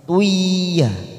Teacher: Tui kita tekan selama 3 ketuk dulu, namanya bacaan idgham bi gunnah.